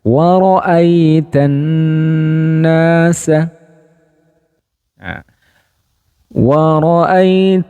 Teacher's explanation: Nun yang bertasjid maka perlu didengungkan terlebih dahulu dengan dengungan yang panjang